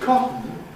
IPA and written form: ˈkɒtn̩ (cotton)